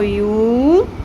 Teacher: یا پیش واو یو، ایک الف کے برابر، واو مدہ آ گیا